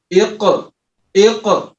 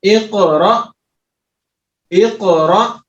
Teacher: اب جب کاف کے اوپر سکون آیا ہے تو اس کو ہم پڑھیں گے ہلا کر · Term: حروف قلقلہ